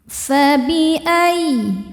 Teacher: masuk ke ya tasydid cukup baca dengan nabar, yaitu menaikkan intonasi suara kita ya. Jadi jangan ditahan kalau sebelumnya tidak ada tanwin atau nun sukun.